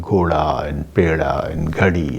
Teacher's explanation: Whenever d occurs between two vowels, then d changes to r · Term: flapping